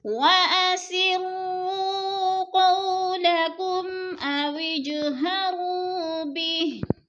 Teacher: اویج کی جیم پر قلقلہ ہو رہا ہے، تھوڑا سا ہلا کر پڑھیں گے. اور اویجہرو وہ مدہ ہے، تھوڑا سا اس کو لمبا کر کے پڑھنا ہے، 2 الف کے برابر.